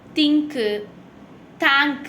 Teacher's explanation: that is a voiceless dental fricative